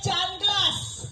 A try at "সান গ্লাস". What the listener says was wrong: কথাটা চান গ্লাস না, কথাটা হচ্ছে সান গ্লাস। ভালো করে উচ্চারণ করো।